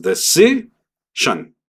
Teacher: este último fonema, a pesar de ser 4 letras, solamente va a ser shon. Y ni siquiera shon, shon.